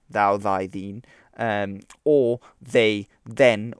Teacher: you also have th in English like thou, thy, thine, or they, then, which is a voiced version of the th sound